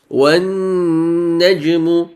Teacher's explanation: the noon here with the shadda on top of it, you read it with 2 harakat ghunnah. وَالنَّجْمُ Jim here is a bouncing letters.